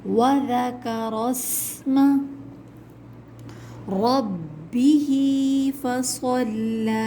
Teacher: رَبِّهِ میں را کے اوپر زبر ہے تو اس کو ہمیں موٹا پڑھنا ہے